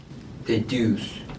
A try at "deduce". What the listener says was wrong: Oh, deduce. でも deduce その伸ばさないんですよ Don't elongate it that much. It's deduce. だからピュピュピュピュピュ deduce, deduce, deduce, deduce, deduce, deduce ですね deduce, deduce, deduce. That's the tempo you want and that's the pronunciation you want as well.